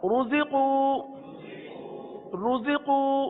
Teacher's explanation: रुज़िक़ू रा पर पेश, रा को पुर पढ़ेंगे